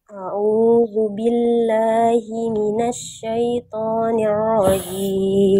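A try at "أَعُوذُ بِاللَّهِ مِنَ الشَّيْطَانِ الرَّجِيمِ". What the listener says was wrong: Oke, pertama huruf ro jangan sampai Maaf saya potong Bunda. Huruf ro jangan sampai ro. Huruf ro tetap harus terdengar getarannya. A'udzubillahi minasyaitonirrajim. Nirrajim.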